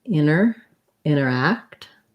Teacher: Americans will often leave that T out and say it more like interact.